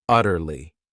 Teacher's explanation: This word has three syllables and the stress is on that first syllable.